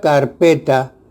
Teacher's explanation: en la palabra carpeta, la sílaba P tiene mayor fuerza o énfasis que car y ta. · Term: sílaba tónica